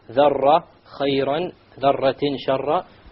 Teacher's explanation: You make sure there is no rolling of the R.